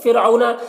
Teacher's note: رائے ساکنہ سے پہلے فا کے نیچے زیر اصلی ہے تو را کو باریک پڑھیں گے، اگر زیر عارضی ہوتا تو پر پڑھتے۔